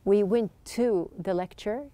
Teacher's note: you can see that there's just one t sound